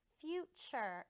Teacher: And the T almost has a CH sound when we say it.